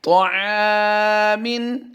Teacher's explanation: ये अलिफ ऐन के साथ है तो ऐन हुरूफ मुस्तफ़िला से है, इसलिए हम इसको बारीक पढ़ेंगे